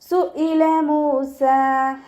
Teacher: ഹംസയുടെ മഖ്റജ് അഖ്സൽ ഹൽക്ക്, തൊണ്ടയുടെ അവസാന ഭാഗം. സൗണ്ട് യാ കെസ്റയായി പോവരുത്, സുഇല എന്നായി പോവരുത്.